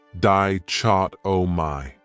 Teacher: That third syllable has that schwa, that sound, di-chot-o-my.